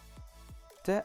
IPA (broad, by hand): t